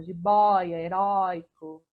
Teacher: Essas que não estão combinando, heróico e jiboia, é de tom aberto, som aberto